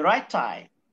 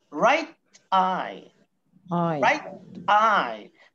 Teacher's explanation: تاخير الهواء شويه عمل لي تمييز ما بين الصوتين.